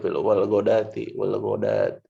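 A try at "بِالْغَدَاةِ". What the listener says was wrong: Wal ghodati. ini wawunya jangan dibaca. Salah, bukan Ghodawati ya. Ini bil ghodati. Jadi ini bukan huruf wawu ini ya. Ini bukan huruf wawu. Bukan huruf wawu, tapi dia itu termasuk huruf apa ya? Bentukan daripada hamzah gitu. Dia ada ditulis tapi tidak dibaca. Ada dalam tulisan tapi tidak dibaca.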